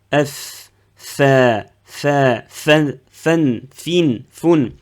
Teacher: Donc la différence, c'est le point d'articulation. Donc la lettre fa, F, en français F, donc les incisives supérieures avec l'intérieur des lèvres inférieures